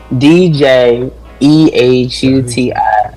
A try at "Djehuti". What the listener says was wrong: Yeah, the D is silent. It's Jehuti.